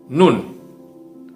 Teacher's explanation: ujung lidah, ya, bertemu dengan gusi bagian atas, ya, lebih keluar sedikit dari makhraj lam, ya, dari tempat keluarnya huruf lam, itu adalah tempat keluarnya huruf nun.